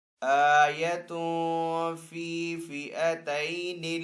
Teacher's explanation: حمزہ کے اوپر یہاں پہ کھڑا زبر ہے تو حمزہ کو ایک الف دو حرکات کے برابر کھینچ کر ادا کریں گے